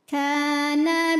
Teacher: karena ada Alif didahului fathah maka Kaf panjang dua harakat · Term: Mad Thobi'i